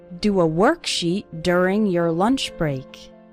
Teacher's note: the letter o in the word work and the letter U in the word during they both have this R sound